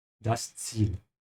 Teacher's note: Again here with the Z sound, has to start with a T